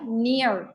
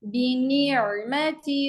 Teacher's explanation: नियर, इस कसरा को और बारीक करिए.